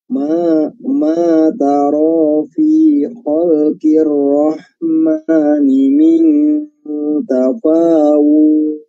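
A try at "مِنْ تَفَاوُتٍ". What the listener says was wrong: Tafawut. Jadi nggak panjang ya, tafawutnya. Wood nggak panjang.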